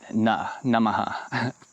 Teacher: the second na sound in Namaha is a dental N. So that's like a normal English N, Namaha.